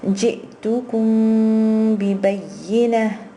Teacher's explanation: you have to hold the meme for a little bit without entirely closing your lips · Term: ikhfa shafawi